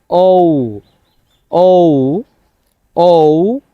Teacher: এতদিন আপনি যেটাকে ও বলতেন, এটাকে আপনাকে শুদ্ধভাবে উচ্চারণটা করতে হবে এভাবে, ও, ও, অর্থাৎ মুখটাকে গোল করে সাউন্ডটা লম্বা করে আপনাকে করতে হবে